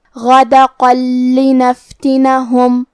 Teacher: ہمیں یہ تنوین کو لام میں ملا کے بغیر غنہ سے اور تشدید کے ساتھ یہ حکم کو ادا کرنا ہے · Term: ادغام بغیر غنہ